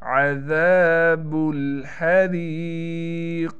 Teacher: क़ाफ पर क़लक़ला करेंगे और मोटे होने के साथ क़लक़ला किया जाएगा, यानी क़ाफ को मोटा भी करके पढ़ेंगे